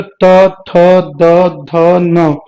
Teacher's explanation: इसमें जीभ आपकी आपके ऊपर वाले दांत के बिल्कुल पीछे टच होगी, दांत पे टच होगी एकदम। तो इसको बोलते हैं इसीलिए दंत्य व्यंजन।